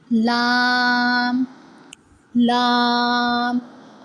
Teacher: Lam originates when the tip of the tongue touches the upper hard palate.